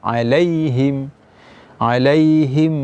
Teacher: 'alaihim ada sifat lin, ya, dibaca dengan ringan saja. · dibaca dengan berdengung karena mim bertemu dengan mim yang sukun bertemu dengan mim.